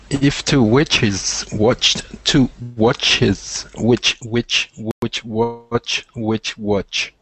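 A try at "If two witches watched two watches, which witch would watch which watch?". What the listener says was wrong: Perfect. Fine.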